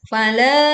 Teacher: fala dibaca panjang 4 sampai 5 harokat